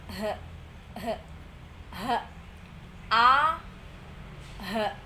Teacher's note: pangkal tenggorokan bagian bawah itu a sama h